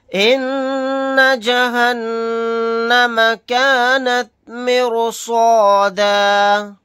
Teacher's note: نون کے اوپر تشدید ہے، یہاں پر غنہ کر کے پڑھیں گے، پھر یہاں پر بھی نون مشدد ہے، یہاں پر بھی غنہ ہوگا، حالت وقف میں دال الف کے ساتھ ایک زبر کو پڑھیں گے، دو زبر نہیں پڑھے جائیں گے۔